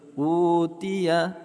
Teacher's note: u kita panjangkan mad badal 2 harakat